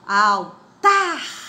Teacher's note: É o tá a sílaba tônica, ela é uma oxítona. Então, ela já não entra lá na regra das paroxítonas.